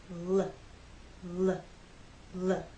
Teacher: we use our voice you will feel vibration here when you make the L Sound